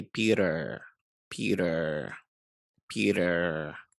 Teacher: they don't say the t they say little d not the big d